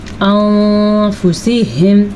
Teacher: نون کو کچھ چھپانا بھی ہے اور غنہ بھی کرنا ہے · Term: اخفا